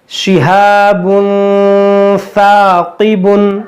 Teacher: हमने यहाँ पर गुन्ना किया, दो पेश की तनवीन के बाद हुर्फ़ इख़्फ़ा में से सा है